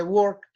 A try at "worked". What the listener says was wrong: y como la K es una consonante que no produce vibración, entonces el sonido que tiene que ir al final de la palabra es el sonido de una T.